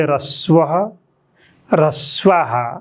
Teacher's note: थोप्रोलाई हामीले हल्का हा जस्तो, हा जस्तो उच्चारण गर्छौँ।